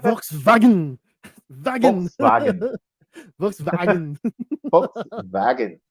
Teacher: their W sounds like a V.